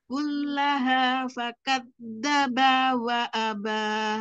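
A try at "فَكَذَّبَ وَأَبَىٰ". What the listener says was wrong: Nah, ba-nya kepanjangan, hati-hati. Fakadzdzaba wa aba.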